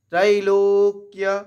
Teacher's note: লোয়ের পরে কয়ের আঘাত নিয়ে কয়জা ফলাটাকে উচ্চারণ করবো